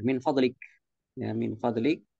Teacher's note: biasanya orang Arab itu mensukunkan harakat akhir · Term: disukunkan